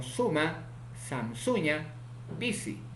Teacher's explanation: Consonante sa, fricativo, alveolar, sordo